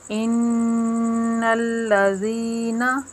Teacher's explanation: ادھر نون مشدد کا غنہ ہے، ایک الف کے برابر رک کر کیا ہے